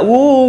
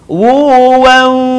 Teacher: sebagian suara keluar dalam hidung